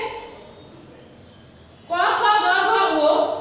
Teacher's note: নরম তালুর পশ্চাৎ স্পর্শ করে। নরম তালুর পশ্চাৎ স্পর্শ করে, এজন্য এগুলোকে জিহ্বামূলীয় বা কণ্ঠ ধ্বনি বলা হয়।